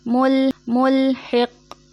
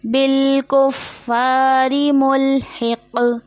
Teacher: یہ قوف موٹا ہے اور قوف حرف قلقلہ میں سے بھی ہے، مطلب آواز پلٹ کے واپس آئے گی